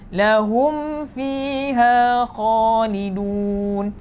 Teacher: Sedangkan mim sakinah bertemu dengan fa tak ada dengung. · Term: izhar